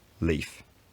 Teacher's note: in some dialects like mine, the vowel has diphthongized very slightly to produce leaf.